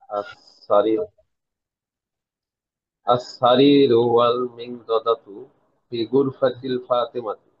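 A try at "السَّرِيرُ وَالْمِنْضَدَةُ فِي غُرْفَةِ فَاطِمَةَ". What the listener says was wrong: ফি, আপনি প্রত্যেকটা শব্দের শেষে হরকতটা কি স্পষ্ট করে দেন, আমি বুঝতে পারছি না। আসারি রু ওয়াল মিনদাদাতু, প্রত্যেকটা ইরাব ভালো করে স্পষ্ট করে দেন।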